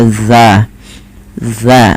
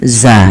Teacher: ujung lidah menempel dengan gigi dari atas kita. Maka dza dza bukan za gitu ya. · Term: zal